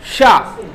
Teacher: आपकी जो जिह्वा है वो हल्का सा तालु पे टच होती हुई आपको महसूस होगी।